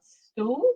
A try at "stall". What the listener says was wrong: Stall. Stall. Not a stool. S-T-A-L-L. Stall. Like you stalled the car.